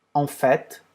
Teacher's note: a gente pronuncia o T. O que é raro em francês